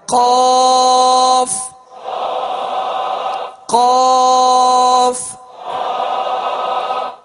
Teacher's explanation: زبان کی جڑ اور تالو کے نرم حصے سے دو نقطے والا قاف جو پر پڑھا جاتا ہے وہ ادا ہوتا ہے. زبان کی جڑ اور تالو کا نرم حصہ، اس سے قاف ادا ہوتا ہے جو پر پڑھا جاتا ہے، یعنی دو نقطے والا.